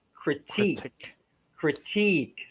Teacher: so stress is a second syllable